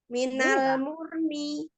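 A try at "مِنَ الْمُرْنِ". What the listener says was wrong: Masih ketelatan. Murni. Umi bilangnya ro-nya itu pada saat monyong. Jangan. Balik. Murni. Jangan telat ya. Jangan telat baliknya.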